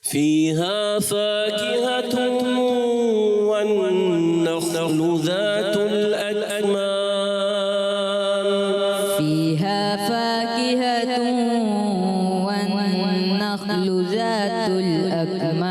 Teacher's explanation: نخل و خا میں کلکلا نہیں کریں گے۔